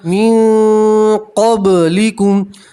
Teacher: علی الذین من قبلکم، نون ساکن کا اکفا ہے، نون کی آواز کو ناک میں چھپائیں گے اور ایک الف کے برابر گننا کریں گے